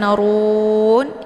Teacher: posisi ujung lidahnya terangkat ke langit ru ru tanurun ya Nah untuk bacaan Run ini dibaca panjang Karena ada wau sukun sebelumnya berharakat dhumah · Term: Mad thi'i